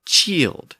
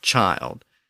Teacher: the pronunciation of the i in Old English would have been e so c i l d would have been chield instead of